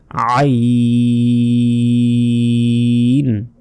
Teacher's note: আইন, গলায় অবশ্যই চাপ দিয়ে উচ্চারণ করতে হবে এই আইন অক্ষরটি।